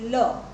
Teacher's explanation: લ જ્યારે બોલો છો તો મોટે ભાગે એ તમારા દાંતને પણ સ્પર્શે છે, તમારી મૂર્ધાને પણ સ્પર્શે છે, પણ મોટે ભાગે એ પાછળના ભાગેથી ઉચ્ચારાતો અને સ્પષ્ટ ન ઉચ્ચારાતો એવો એ વ્યંજન છે. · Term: પાર્શ્વિક વ્યંજન